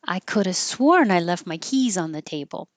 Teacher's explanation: it will be easier to just drop the V and say ca